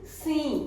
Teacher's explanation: इसका उच्चारण लिखा हुआ है सी विद अ नेजल साउंड